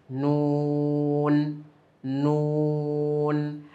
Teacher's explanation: নয় নাম্বার মাখরাজ জিহবার আগা তার বরাবর উপরে তালের সঙ্গে লাগিয়ে উচ্চারিত হয়।